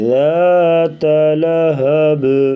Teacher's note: ادھر قلقلہ اور با ساکن ہے تو یہاں پر قلقلہ کر کے پڑھیں گے · ذال کے ساتھ جو الف ہے یہ الف مدہ ہے، اسے بھی ایک الف کے برابر لمبا کر کے پڑھیں گے